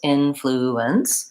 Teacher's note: topic of syllable stress so influence has three syllables influence and in American English we stress the first syllable